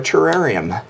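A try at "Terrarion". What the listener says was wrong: Pretty sure that word ends with an N.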